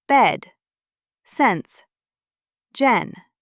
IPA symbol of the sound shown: ɛ